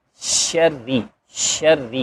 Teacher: تفشی کی آواز آئے گی، ش کی آواز آئے گی، اور را کے نیچے زیر ہے اس لیے اب یہ را ٹوٹل ہی باریک پڑی جائے گی